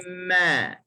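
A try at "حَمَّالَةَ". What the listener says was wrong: Hujung lidah jatuh sikit lagi.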